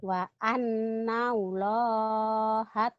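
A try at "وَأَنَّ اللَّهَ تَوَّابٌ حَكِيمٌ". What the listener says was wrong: nyamber. Wa annallaha tawwabun hakim. Nyamber ya, kurang nyamber.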